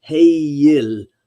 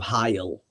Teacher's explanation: One thing about the Norse versus, say, German is that the EI does not make a long I sound. It is pronounced with the E and the I combined together in a diphthong as Heyil instead of Heil.